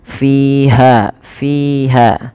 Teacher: ulqiya fiha kasrah disempurnakan kasrahnya Kemudian pada lafal fiha Fa hati-hati Jangan dibaca piha jangan dibaca dengan P tapi dengan F